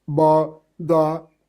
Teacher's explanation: One major feature distinguishing Sindhi from the rest of the Northwest group is the development of series of imploded stops like ba, da, etc.